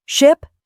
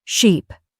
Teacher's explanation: Say, ship, then sheep. Ask, are my lips relaxed and unrounded for I in ship, then stretched wide for I in sheep